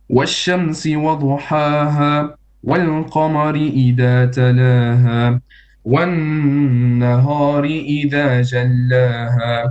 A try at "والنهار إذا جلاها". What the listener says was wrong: It's one nahari. Ha is flat, not nahari. There is no such thing in Hafs and Asim. So one nahari.